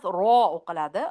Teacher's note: Ra emas, ro'qiladi. Ro harfi fatha va bilan kelganda qalin o'qiladi.